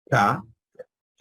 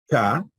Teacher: Entonces tenemos la K, K, se produce atrás, K, y esa sería de tipo sorda